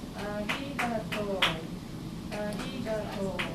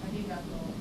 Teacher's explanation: To is twice as long.